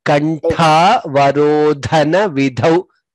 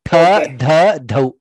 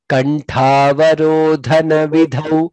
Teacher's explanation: Three mahapranas there. Tha, dha, dhau.